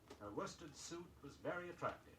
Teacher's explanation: W-O-R-S-T-E-D, but say it without the R